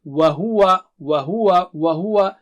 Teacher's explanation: ہونٹ کو گول کر کے آپ کہیں گے تو بہت صاف جو ہے واو کا مخرج آئے گا